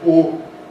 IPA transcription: o